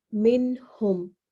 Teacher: یہاں پہ ہا حروف ہلکی میں سے ہے تو غنہ نہیں ہوگا، بلکہ اس کو ظاہر کر کے نون کو پڑھیں گے۔ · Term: عدم غنہ